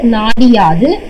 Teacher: வந்துட்டு குற்றியல் உகரம் வந்துட்டு நிலை வருமொழியில வந்துட்டு யகரம் வந்துட்டு வந்திருந்தது அப்படின்னா அந்த உகரம் கெட்டு அது இகரமா மாறி அந்த ஒரு மாத்திரை அளவிலிருந்து அரை மாத்திரையா குறையும் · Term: குற்றியல் இகரம்